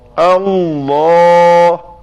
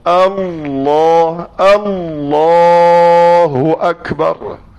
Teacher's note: Dia hujung lidah tu memang mesti tekan 2 kali. Tekan di al dan nak bunyi la tekan sekali lagi. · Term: lam inhiraf